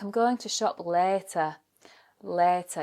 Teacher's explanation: In West Yorkshire, so around Leeds, Bradford, Huddersfield, Wakefield, you'll really get that long A, like I'm going to shop later.